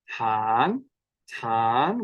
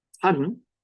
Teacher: Tan is a long vowel. And tan, which has an eighth note, really, really short by English standards, shorter than we would say in the word tan.